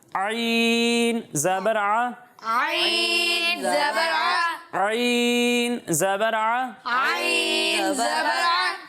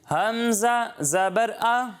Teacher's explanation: جب ہم عین کی ادائیگی کریں گے تو اسے حلق کے درمیان والے حصے سے پڑھتے ہیں اور حمزہ کو حلق کے نیچے والے حصے سے پڑھتے ہیں